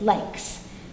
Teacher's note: No vibration follows no vibration, such as likes. The K does not use the voice box, therefore the S is all air.